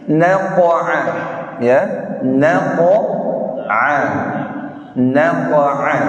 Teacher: qaf yang mantulnya atau qalqalahnya harus ke atas bukan ke bawah. Tidak naqa'a tapi naqa'a.